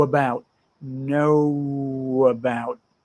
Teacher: the W in no no no connects to the a in about